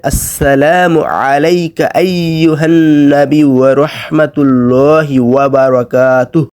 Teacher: তো এইখানে ওয়া আছে, ওয়ার উচ্চারণের ক্ষেত্রে আপনারা অবশ্যই ওয়া জবর ওয়া করবেন, ওয়া জবর আ পড়বেন না